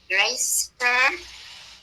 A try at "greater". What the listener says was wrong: Está diciendo una S aquí y no hay S. Es greater. Ok. Con T. Greater. Greater. Greater. Como la T.